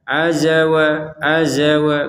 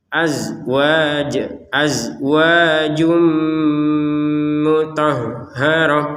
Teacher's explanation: Perhatikan huruf zai ini tidak boleh dipantulkan ya. Tidak boleh seperti ruziqna minqoblu.